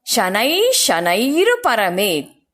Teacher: ವಿಸರ್ಗ ಆದ ನಂತರ ಶ ಅಕ್ಷರ ಇರೋದ್ರಿಂದ ಶ ಅಕ್ಷರವನ್ನ ಸ್ಟ್ರೆಸ್ ಮಾಡಿ ಹೇಳಬೇಕು